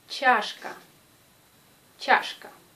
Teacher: Prononcez che comme dans l'alphabet. Et la lettre che a une influence sur la lettre A qui devient plus proche de ya